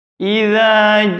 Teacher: Yang pertama di ayat pertama yakni idza zubal, ujung lidah. Tidak ada angin yang berdesis dari mulut antara lidah dengan gigi